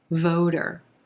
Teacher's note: a flap t which sounds like a soft d voter voter that second syllable is going to be very soft and light